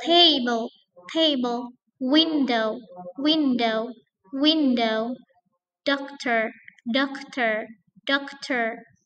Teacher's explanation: this is a stressing on the first syllable